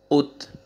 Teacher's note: light سے sound آئے گا تا کا، ایسے نہیں پڑھنا ات، ڈبل نہیں ساؤنڈ آئے گا، قلقلہ نہیں ہوئے گا